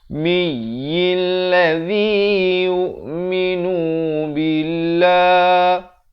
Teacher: dengungkan mim sabdu 2 harakat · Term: wajibul gunnah